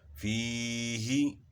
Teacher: فا کو یا کے ساتھ ہم ملائیں گے تو آواز کو تھوڑا کھینچیں گے. یا ساکن سے پہلے زیر ہے، یا خود کیا ہے ساکن ہے، یعنی اس کے اوپر جزم ہے، تو جزم کا دوسرا نام سکون ہے. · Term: یا مدہ